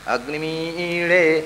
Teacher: ಅಗ್ನಿಂ ಈಳೆ ಅಂತಿದ್ದದ್ದು. 2 ಅನುದಾತ್ತವು ಹೋಗಿ ಮೊದಲನೇ ಅನುದಾತ್ತ ಸ್ವರಿತ ಆಯಿತು, 2ನೇ ಅನುದಾತ್ತ ಪ್ರಚಯ ಆಯಿತು, ಅಗ್ನಿಮೀಳೆ ಅಂತ ಆಯಿತು. ಇದು ಸಂಹಿತೆಯಿಂದ ಆಗುವ ಬದಲಾವಣೆ.